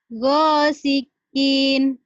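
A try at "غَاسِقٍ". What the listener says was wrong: Pendek, Bu. Ghasiqin.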